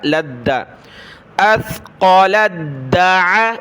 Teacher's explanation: لام کو دال کے ساتھ ملائیں گے، تا کو نہیں پڑھنا ، لام دال زبر لد، دال زبر دا، لد، اثقلت دع،